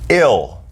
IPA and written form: ɪl (Ill)